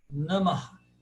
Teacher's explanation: E o Visarga, que é aquele ahá, como Namah.